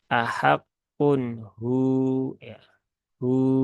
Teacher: berarti dia berubah menjadi mad asli ya atau mad thi'i berarti dibaca dengan kadar dua harakat · Kalau kita wakaf di sini, maka waw yang fathah dirubah menjadi sukun, sehingga di sini ada waw sukun setelah dhammah. Berarti dia berubah menjadi mat asli ya atau mat tabi'i, berarti dibaca dengan kadar dua harokat ahakun hu ya hu, nah, seperti itu.